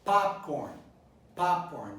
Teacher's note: The correct stress is on the first syllable.